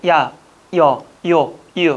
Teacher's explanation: 이중모음에는 이야, 이어, 이오, 이우 앞에 이 소리가 짧게 나는 겁니다.